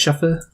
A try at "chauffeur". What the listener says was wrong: Well, you were kind of closer the first time. The first time you pronounced it right, but you got the stress wrong. I mean, I would say it's pronounced chauffeur. You kind of pronounced it chauffeur.